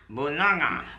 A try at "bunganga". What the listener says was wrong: Bunganga. Bunganga. Nga. Nga. Nga. You don't use your tongue. You use your nose inside. Nga. Nga nga.